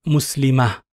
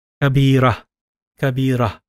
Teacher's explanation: So the ta marbuta is read as a ha when you stop at it and don't apply any vowel sound. When you apply it, you read it as a normal ta, you would, with the vowel sound being applied.